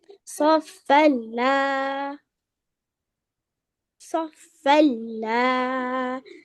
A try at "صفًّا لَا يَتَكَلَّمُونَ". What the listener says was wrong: Don't stretch along, just little. صفا لا يتكلمون.